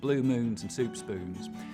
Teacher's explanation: I'll start off with very fronted goose vowels, blue moons and soup spoons, but they'll get less and less fronted the further west I go.